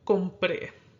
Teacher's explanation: And that word gets an accent because it doesn't follow the natural stress rule. Compré is accented on its final syllable